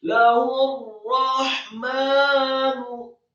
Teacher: Setelah membaca huruf ha yang tafkhim menggema di dada, marfu' 1 harokat, kemudian setelahnya langsung disambungkan ke huruf ra yang tasydid.